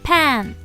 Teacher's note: 단모음 A는 에 소리가 난다고 배웠어요